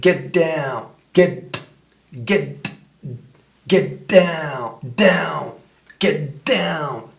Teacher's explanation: Par exemple, get down, tu vas pas dire get et plus loin down. Tu vas supprimer le T de get, donc ça fait get down, get down, get down, tu vois, parce que sinon ça ferait ça, get down, ça peut pas marcher, quand tu parles vite, ça n'existe pas.